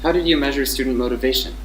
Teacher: The intonation starts at the high pitch because how is here directly stressed. It's how did, and then we have it goes down at vacation. · And then the last syllable shun is in the low pitch. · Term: pronominal questions